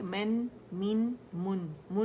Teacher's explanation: دونوں ہونٹوں کے خشک حصے آپس میں ملائے، ان کو ضمہ دیا، کمپلیٹ رولنگ دی، اور نون ساکن پہ ان رول کر دیا